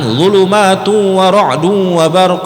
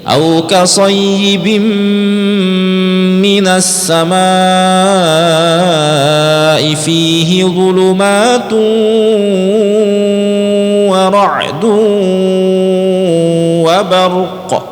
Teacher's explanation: Nah jadi Pak, kalau ketemu waw bertasdid kemudian sebelumnya itu ada tanwin, jangan buru-buru, jangan zulumatu wa ra'du wa barq, jangan seperti itu. Idghamkan dulu, dimasukkan dan didengungkan dulu. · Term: idgham bi gunnah